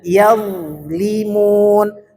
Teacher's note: Ini huruf dha, itu hurufnya mengalir suaranya, jangan tertahan, dan dia tidak berqalqalah. Jangan dibaca yazlimun, mengalir suaranya.